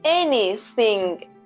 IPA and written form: ˈen.i.θɪŋ (कुछ भी)